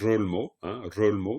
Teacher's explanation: Rolmo, musique, Rolmo, ça sera un R roulé